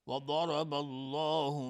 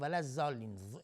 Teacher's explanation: ضاد از کنار زبان و با چسبیدن به دندانهای آسیاب بالا تلفظ میشه